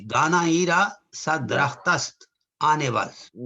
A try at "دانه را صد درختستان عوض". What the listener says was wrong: So this is actually all one word. So this is an issue with the text. So it's درختستان.